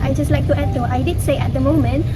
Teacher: When the speaker pronounces the sentence, I just like to add though, I did say at the moment, there are some words where elision occurs. First, in the word just, the final t sound is deleted and the word is pronounced as just.